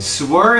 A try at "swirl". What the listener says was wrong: There's an L. There's an L.